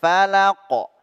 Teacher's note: langsung Qalqalah huruf qof mantul ketika disukunkan